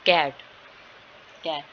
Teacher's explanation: जब आपके पिछले जुबान का पिछले वाला हिस्सा है वो ऊपर उठता है तो वो वेलर का साउंड कहलाता है